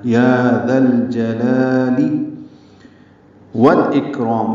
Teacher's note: مدہ کو 2 حرکات لمبا کرنا ہے، یا ذا الجلال والاکرام، واو کو لام سے ملانا ہے ، یہ لام بھی پڑھا جائے گا جیسے ذل جلال میں